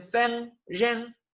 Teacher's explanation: hay zonas de China donde no pueden pronunciar este sonido y lo pronuncian como la N.